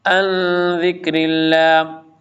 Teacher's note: نون ساکن کے بعد زال آ جائے تو اخفا ہوتا ہے